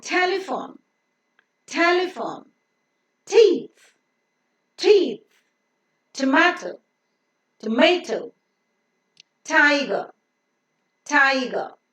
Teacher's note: T also is pronounced with a slight H sound, which is an important feature in English called aspiration. So it is not pronounced as T, it is pronounced as T, T with a slight H sound.